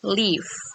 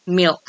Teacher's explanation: So the L becomes dark L before an optional consonant at the end of the word.